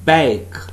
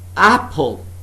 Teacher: in the first word it's been used as a diphthong but in the second word it has been used as a short vowel sound